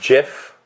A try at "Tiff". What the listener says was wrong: No, it's with a T, bro. Tiff.